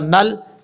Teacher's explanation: نون کو لام سے ملائیں گے، بیچ میں حمزہ کو چھوڑ دیں گے